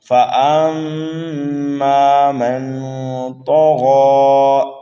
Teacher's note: نون ساکن کے بعد میں طا آ رہا ہے اس لیے یہاں پر اکفا کریں گے، حرف طا اور غین کو پر کر کے پڑھیں گے، یہاں پر وقف کریں گے تو وقف بالسکون ہوگا۔ · میم مشدد ہے، غنہ کریں گے